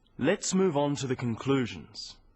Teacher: stressing conclusions because it's the key word in this sentence